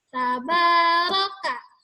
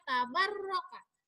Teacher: tidak ada tasydid, jadi tidak boleh ditekan. Jadi nggak boleh tabarro, bukan begitu, tapi yang panjangnya adalah makabinya adalah di huruf ba.